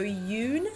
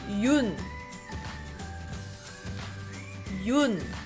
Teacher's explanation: we want to flatten the sound out and rather than swing it